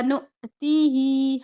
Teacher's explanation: हमजा पे जज़म है, झटका होता है